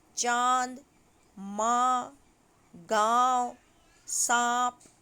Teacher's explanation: अनुनासिक का उच्चारण नाक और मुंह से किया जाता है